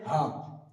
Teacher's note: হাটা উচ্চারিত হবে একদম কণ্ঠনালী শেষ বা বুকের ভিতর থেকে গম্ভীর একটা বাতাস বেরিয়ে বেরিয়ে উচ্চারিত হবে